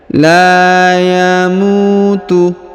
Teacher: huruf la dipanjangkan 2 harokat karena di depannya terdapat alif kecil ya, atau terdapat tanda alif ya, yang ini, maka kita panjangkan huruf la-nya 2 harokat.